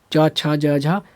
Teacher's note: च वर्ग तालू से उच्चारण होगा च छ ज झ सब तालू से यहां से उच्चारण होगा